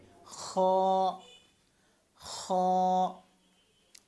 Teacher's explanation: খ হলকের শেষ থেকে, হলকের শেষ হচ্ছে, শুরু হচ্ছে এটা, শেষ হচ্ছে এটা।